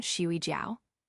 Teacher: Her voice glided up and down the words like a child on a swing. Sleep is fourth tone. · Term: third tone